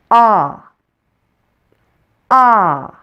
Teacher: The short O is a central vowel, so you'll need to pull your tongue back a little from your front teeth to pronounce it. And open your mouth as big as possible.